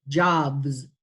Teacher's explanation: Voiced, B, jobs, B is voiced, the plural will be Z.